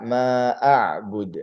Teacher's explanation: qalqalahnya untuk dal harus diperjelas